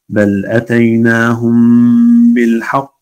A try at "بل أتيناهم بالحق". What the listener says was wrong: رقق الحاء. بل أتيناهم بالحق بالحاء.